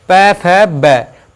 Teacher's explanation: तो ओष्ठीय जिनका को इस्तेमाल करते बोलते वक्त उच्चारण करते समय हमारी ध्वनि होठों से होकर निकलती है, वे हमारे ओष्ठीय वर्ण कहलाते हैं